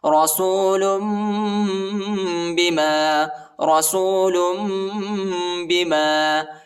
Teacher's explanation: رسول نہیں پڑھیں گے، ٹھیک ہے، یعنی ادھر جو ہے تنوین کے بعد با آیا ہے، ادھر ہم اقلاب کریں گے، یعنی آخر میں جو ہے میم کی آواز نکالیں گے اور اخفا بھی کریں گے